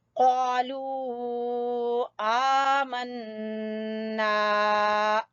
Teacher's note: نون مشدد کا غنہ کر کے الف مدہ یہ بھی ہے، اس کو کھینچیں گے